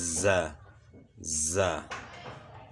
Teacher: اس میں زبان کی نوک سامنے والے نیچے دانتوں کے ساتھ ٹچ ہوتی ہے، جس کی وجہ سے سیٹی کی مثل آواز پیدا ہوتی ہے